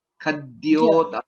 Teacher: There's no Mahaprana. Only Kha is Mahaprana.